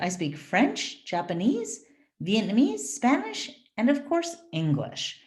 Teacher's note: so it's always up up up up down